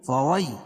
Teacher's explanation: یا ساکن سے پہلے زبر ہو تو یا لین ہوتا، اس کو نرم آواز کے ساتھ جلدی ادا کریں گے